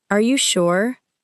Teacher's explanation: A gentle rising tone may sound like a normal request for confirmation.